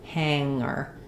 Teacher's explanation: sometimes ng in the middle is just ng with no g